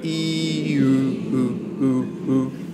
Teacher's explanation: All right, what's happening is your tongue is moving back. Your lips are changing, your lips are becoming rounded and kind of pouting, but also your tongue is moving back.